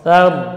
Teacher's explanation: jadi tha-nya tipis, yang tebal huruf ra